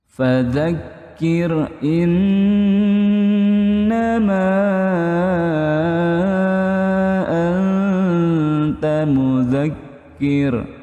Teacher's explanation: Fazakir nih karena ada kaf tasdid ya ada penekanan sedikit dijedah itu tapi enggak sampai putus dia mengalir